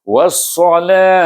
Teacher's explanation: Kemudian kita sukunkan huruf, iaitu ta marbutah di sana, maka kita sukunkan dengan huruf ha.